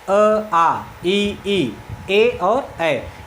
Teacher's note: इनके उच्चारण में ओठ गोला नहीं हो रहा है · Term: अवृतमुखी स्वर